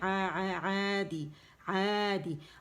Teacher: یہ الف صغیرہ جو عین کو کھینچ رہی ہے 2 کاؤنٹس کے لیے، تو مد اصلی مد طبیعی بن رہا ہے، الف مدہ بن رہا ہے، تو آواز 2 کاؤنٹ کے لیے اوپر جائے گی، ٹھیک ہے؟